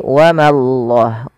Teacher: Ma tipis allahnya tebal